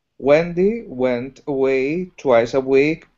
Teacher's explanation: you do some really nice things like combine the sounds together, like went away